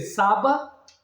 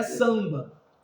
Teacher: Ele só tá dando uma nasalização para o ar. Em vez do A ser, em vez de ser saba, é samba.